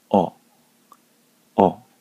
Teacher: 何も記号をつけない場合、お、お。口を大きく開いて、お。と言います